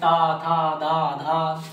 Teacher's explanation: सब दांत से टकरा रही है हमारी जीभ।